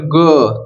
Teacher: अ की ध्वनि निकल रही है अंत में